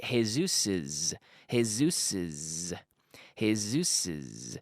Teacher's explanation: When we have a word ending in S, like Jesus, a name, Jesus's, it sounds like the Z in English.